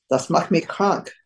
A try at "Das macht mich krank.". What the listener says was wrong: Sehr gut, sehr gut.